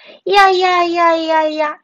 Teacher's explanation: 빠르게 이야를 연속해서 발음하면 야라는 발음이 됩니다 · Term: 반모음